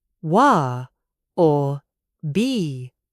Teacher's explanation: dropping the T completely between vowels, you sound much more casual. It sounds very London, very street level.